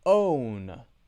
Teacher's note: Start open, then to W, then to the N sound. Notice my mouth is not closed.